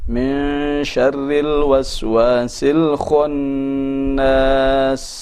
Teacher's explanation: Jadi bukan sekedar ada suara kha saja, ya, tapi juga harus ada suara yang mufakham.